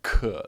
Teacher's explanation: it's a lot more air that comes out in chinese